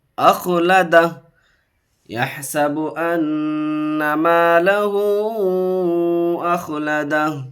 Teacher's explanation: देखिए नून के ऊपर तशदीद है। अन्ना मालहू, यहाँ मद्द मुनफसिल 3 अलिफ खींचेंगे।